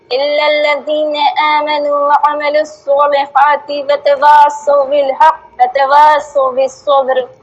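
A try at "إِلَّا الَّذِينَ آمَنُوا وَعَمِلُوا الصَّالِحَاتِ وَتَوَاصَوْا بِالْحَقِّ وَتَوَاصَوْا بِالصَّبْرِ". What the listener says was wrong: یہاں پر آپ کیوں وقف کر رہی ہیں؟ بالحق پہ. نہیں نہ کریں.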